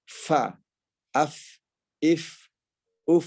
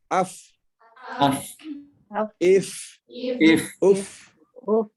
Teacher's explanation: Ujung gigi seri atas ini bertemu dengan bibir bawah bagian dalam. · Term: huruf fa